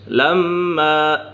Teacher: لما میم مشدد ہے، میم مشدد میں ہمیشہ غنہ ہوتا ہے۔